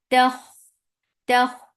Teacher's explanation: Kha give رخاوة on kha, and kha should be from your throat.